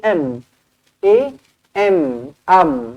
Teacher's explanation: huruf nun ni dia dah dibuanglah dah dibuang ataupun masukkan terus ke dalam huruf mim jadi dekat sini bacaan dia adalah am a m am oke